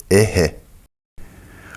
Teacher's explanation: Звук, обозначаемый буквой «х», похож на легкий смех или покашливание.